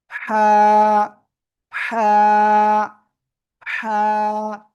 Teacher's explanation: গলার মধ্যকান চেপে এক আলিফ টানে উচ্চারণ করব